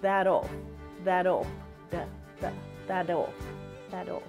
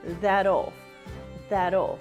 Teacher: The flap T is voiced, meaning that if you touch your throat, you should be able to feel your vocal cords vibrate.